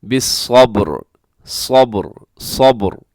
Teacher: और यहाँ वक़फ़ तो हम करेंगे क्योंकि सूरत मुकम्मल हो रही है, वक़फ़ करेंगे तो रा साकिन, तो उससे पहले स्वाद के ऊपर ज़बर है तो यहाँ भी रा पुर पड़ी जाएगी वक़फ़ में